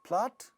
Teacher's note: So, pa sound in plot also gets aspirated.